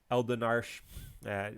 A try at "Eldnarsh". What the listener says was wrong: No, but it is Eldnarsh in Japanese. Just 2 syllables.